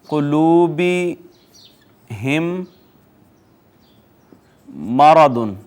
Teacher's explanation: میم ساکن کے بعد اگر تو آ جائے میم، اور وہ ڈیفینیٹلی میم متحرک ہوگی، یعنی میم کے بعد حرف میم آ جائے تو پہلی میم کو دوسری میم میں ضم کر دیں گے، ادغام کر دیں گے۔ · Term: ادغام شفوی